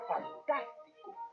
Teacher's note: La palabra fantástico tiene el acento en la antepenúltima sílaba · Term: esdrújula